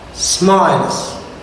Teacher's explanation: Z. Why? Because the last sound is L.